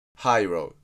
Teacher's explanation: R is pronounced like the English R, not the Japanese ra sound. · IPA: /haɪroʊ/